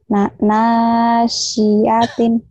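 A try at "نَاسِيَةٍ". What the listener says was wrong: Nanya panjang.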